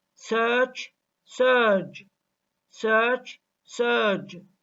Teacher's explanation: the vowel in the word surge is longer than the vowel in the word search